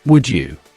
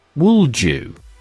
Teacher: Connected, would-you. Here the D and J combine to form a j sound.